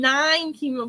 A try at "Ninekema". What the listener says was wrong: Nikema. Nikema. The NE is silent. Nikema.